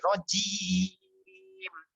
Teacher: জিমটা শক্ত করতে হবে, ভাইব্রেশন আছে